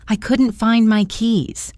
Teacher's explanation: The phrase couldn't find is a great example of elision, where a sound is dropped. We don't really pronounce the T in couldn't very strongly, especially when it's followed by a consonant like the F in find.